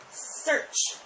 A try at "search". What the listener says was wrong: Uh-oh. Your teeth were open.